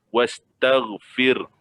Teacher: Tapi kita jangan berhentikan dekat ra. Jangan berhenti kat ra, jangan terhenti di ra saja. Bunyikan ha tu sedikit.